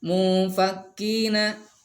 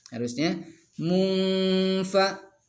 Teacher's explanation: Kemudian ini ikhfa, munfa. Ingat ikhfa itu harus dibaca dengung 2 harokat. Jadi nggak boleh seperti ini mufakkina.